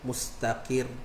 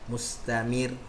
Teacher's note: ra yang ada syaddah ni, maka kita kurangkan sikit getaran dia